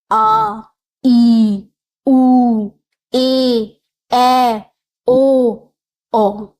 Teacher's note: जिन स्वरों के उच्चारण में ह्रस्व स्वरों से दुगना समय लगे उन्हें दीर्घ स्वर कहते हैं।